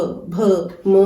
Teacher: हमारे होठ में आपस में मिल जाती हैं और हवा रुकती है, तो ये ओठ है।